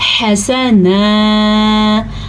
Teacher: ہا کے تلفظ پہ دھیان دیں، پریکٹس کریں اور اس کو نکالیں اپنے حلق سے